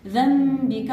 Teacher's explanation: ذنبك عندنا هنا إقلاب ميم